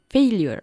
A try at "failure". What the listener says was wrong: Failure. Good.